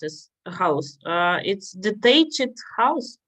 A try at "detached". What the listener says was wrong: Yes, very good. But say it shorter. Detached.